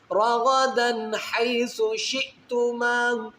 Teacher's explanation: 2 زبر کی تنوین کے آگے حروف ہلکی میں ہا ہے، تو یہاں پر غنہ نہیں اظہار کریں گے، اس کو ظاہر کریں گے۔